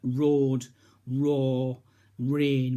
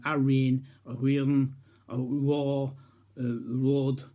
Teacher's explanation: northumberland r is quite different it's an ovular ah which means it's produced in the back of the throat and it's most prominently heard at the beginning of a word rather than after a vowel